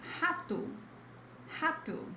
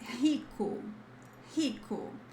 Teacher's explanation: R at the beginning of a word sounds like a throaty H, which is H, H. · whenever you see this R, the beginning of a word, this sound is like H, the H sound in English